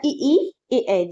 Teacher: ठीक है, अग्रस्वर में क्या होता है? जीभ का आगे का भाग काम करता है।